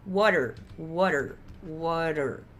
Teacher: esse T aqui é o R na frente da boca para um R no fundo da boca.